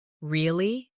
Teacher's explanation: really? With a rising tone to show surprise.